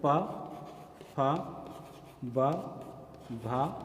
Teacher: हमारी जो वायु होती है वो ओठ से आकर के टकराती है। इस तरीके से हमें व्यंजन के रूप में ओष्ठ वर्णों का मिल जाना होता है।